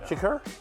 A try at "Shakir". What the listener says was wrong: Shakir. I think you went Shakur Sanders type of,